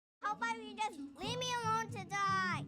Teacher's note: Did you see how she went up at the end? That's because it's a rhetorical question.